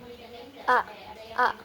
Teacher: cara keluarnya itu berupa letupan infijari a a. Kemudian posisi dalam pita suaranya itu tidak bersuara atau mahmus a a a a, tidak terasa, tidak bersuara. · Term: huruf hamzah